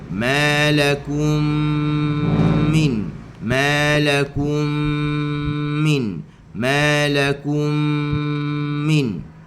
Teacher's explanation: Cukupkan 2 harakat. Bibir jangan ketap.